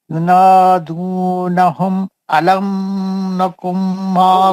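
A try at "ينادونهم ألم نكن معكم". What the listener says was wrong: غنّہ کر دیا نا آپ علم میں. علم میں کہیں کو غنّہ کرے بولو آپ. یار آپ غنّہ کر کے پڑھے نا.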